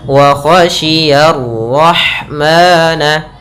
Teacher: Kemudian lafal ya ketemu dengan ra yang berharakat tasydid dan berharakat fathah. Ra-nya tebal, ya-nya tipis.